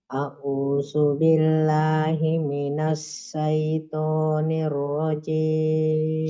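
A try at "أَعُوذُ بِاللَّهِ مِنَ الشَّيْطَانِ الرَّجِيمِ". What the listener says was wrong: Shin minasya. Kurang menyebar.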